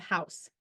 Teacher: consonant H is the unvoiced glottal fricative producing the H sound the vocal chords are held open allowing air to flow through the space between them as the air passes through this narrow opening it creates friction